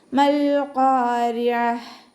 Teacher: ഖാഫ് ഇസ്തിഅലാൻ്റെ ലെറ്ററാണ്, അപ്പോൾ അതിനെ നല്ലോണം ഉയർത്തിയിട്ട് പറയാൻ ശ്രദ്ധിക്കുക.